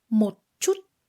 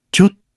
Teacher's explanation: Don't release the final ending t sound when saying chút. Just keep it short and inside your mouth at the end.